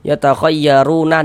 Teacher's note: Jika kita tidak berhenti di huruf nun, ru menjadi mad tabi'i dan dibaca dengan 2 harokat.